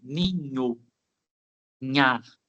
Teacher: Fica um pouquinho para lá dos lábios, numa região que a gente chama de alveolar, tá? E o Nha, uma região que nós chamamos de palatal, referente ao NH